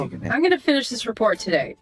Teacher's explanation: Downward slide on today.